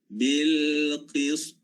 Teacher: Ta ni dia berbaris, kemudian bila kita waqaf, kita matikannya. Maka dia menjadi qalqalah.